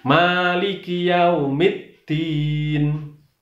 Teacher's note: Demikian cara membaca non, selain harus suaranya habis dulu baru boleh mingkem. Ini juga tidak boleh ada buntutnya, tidak boleh ada dengungnya